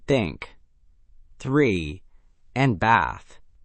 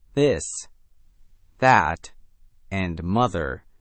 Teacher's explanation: English has 2 TH sounds. The voiceless one, like in think, 3, and bath. And the voiced one, like in this, that, and mother.